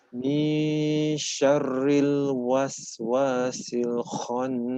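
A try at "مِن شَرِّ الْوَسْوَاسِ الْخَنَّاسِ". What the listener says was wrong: Jangan terlalu bergetar ya, bergetar tapi tidak terlalu berlebihan. Ya, jangan sampai syarri ya. Syarri. Kurangi getaran. Ada getar tapi tak terlalu banyak. Ya, sambil senyum ya. Syarri.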